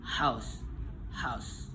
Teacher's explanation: nama bunyinya itu voiceless glotal frecative